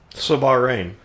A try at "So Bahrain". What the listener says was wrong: The way you said Bahrain sounded... way you said so Bahrain, sounded like Sabaro, which is a